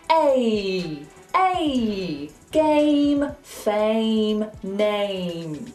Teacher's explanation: Make sure you keep that A moving from an A to an E sound. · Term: diphthong